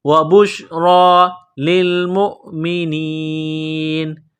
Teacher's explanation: را کے اوپر کڑا زبر ہے، را کو موٹا کرنا ہے، ایک الف کے لمٹ میں کھینچنا ہے